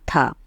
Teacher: था जो है स्पर्श भी है, अघोष भी है, महाप्राण भी है और दंते व्यंजन भी है।